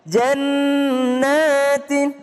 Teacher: jannatin nun tasdid berdengung jannatin tanwin ketemu dengan ta ikhfa